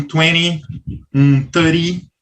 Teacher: o americano, às vezes, puxa o T para esse Rzinho. Então, sai um 20, um 30, e aí a pronúncia muda um pouquinho.